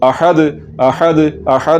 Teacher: दाल हुरूफ कलकला में से है, कलकला होगा अहद अहद अहद।